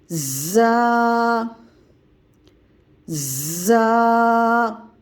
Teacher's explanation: जा की अदायगी सीटी सख्ती से होगी यानी पहले सीटी की आवाज निकालेंगे उसके बाद सख्ती से अदा करेंगे ऊपर के सामने के दांत इसी तरह नीचे भी यह सामने